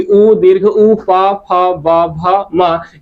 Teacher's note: तो यहाँ पर आपको ध्यान देना है कि यहाँ पर देखिए हरस्व उ है, हरस्व उ के साथ साथ दीर्घ उ है, पू का आशय पा वर्ग है, यानी कि पा फ ब भ म, और यहाँ पर आप देखेंगे ये सभी के सभी वर्ण, यानी कि उ दीर्घ उ पा फ ब भ म, ये सभी के सभी ओष्ठों से बोले जाते हैं, यानी कि ओष्ठ से बोले जाते हैं।